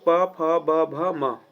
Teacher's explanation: जब भी हम इनका उच्चारण करेंगे हमारा दोनों होठ क्या होने लगेगा? सटने लगेगा। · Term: ओष्ठय वर्ण